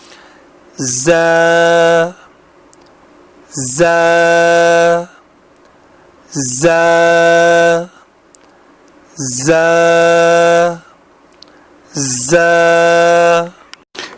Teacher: زبان کی نوک جب نیچے کے 2 دانتوں کے ساتھ ساتھ اوپر کے 2 دانتوں سے ملے یعنی ثنایا سفلا کے ساتھ ساتھ ثنایا علیہ سے ملے تب یہ حرف ادا ہوتا ہے